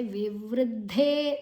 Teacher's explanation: ವಿವೃದ್ಧೇ, ವಿ ವು ಋ, ವು ಮತ್ತು ಋ ಎರಡು ಅಕ್ಷರ ಸೇರಿ ಸಂಯುಕ್ತಾಕ್ಷರ ಆಗಿದೆ. ವಿವೃದ್ಧೇ, ದ ಮತ್ತು ಧೇ ಮಹಾಪ್ರಾಣ ಮತ್ತು ದೀರ್ಘ